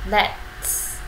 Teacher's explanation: Âm t đằng sau nó có một phụ âm thì chúng ta sẽ ngắt âm t đi.